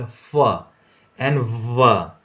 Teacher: Then we have got fricatives, in which case complete closure of the oral cavity does not happen, but air faces obstruction and then it passes through with friction